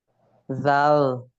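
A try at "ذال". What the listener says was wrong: এই তো মানে জিভা বের করতে বলছি এখন পারলেন, যে ওই চিত্র দেখাইয়া জিভা বের করতে, হ্যাঁ জিভা বের করে উপরে দাঁতে লাগিয়ে উচ্চারণ করতে হবে।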